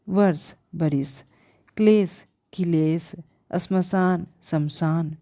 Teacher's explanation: अपभ्रंश भाषा में दो व्यंजनों के मध्य स्वरागम की प्रवृत्ति भी मिलती है